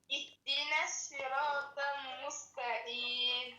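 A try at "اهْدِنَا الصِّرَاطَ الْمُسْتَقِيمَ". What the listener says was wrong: Mustaqim, c'est le qaf. Ça, c'est l'accent des peuls, là. C'est les peuls qui lisent comme ça. Mustaqim.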